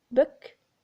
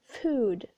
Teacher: you notice there is a difference book and food book food the first one is short the second one is a bit longer